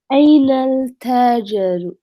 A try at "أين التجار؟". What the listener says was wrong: So we drop the lam in pronunciation. So we don't say ainal ta. We don't say ainal. Ainat tujaru.